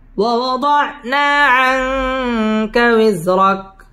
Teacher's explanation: আং ইকফা গুন্নাহ করে পড়তে হবে